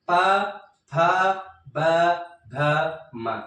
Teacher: दोनों होठ जब स्पर्श होंगे तभी बोला जाएगा, क्योंकि ये ओष्ठ्य वर्ण है